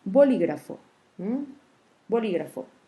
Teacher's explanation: c'est la antépénultième syllabe, la syllabe li, qui porte l'accent tonique. Donc, on classe les mots comme proparoxytone.